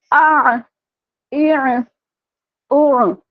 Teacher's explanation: اب میں نے عین کا مخرج واضح کیا، عین کو جھٹکا نہیں دیا ہے میں نے